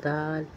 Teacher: ज़बान की नोक को अगले और ऊपर के दो दांतों के जड़ से लगाकर अदा होता है दाल